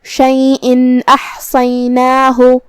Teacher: ہمیں یہاں تنوین کو ظاہر کرنا ہے اور نون ساکن پڑھیں گے اور بغیر غنہ سے حکم کو ادا کریں گے · حرف الحاء کو ہم حلق کے درمیان والے حصے سے پڑھیں گے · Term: اظہار